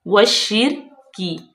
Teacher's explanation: रा साकिन है तो रापुर पढ़ी जाएगी। काफ जो है वो बारीक है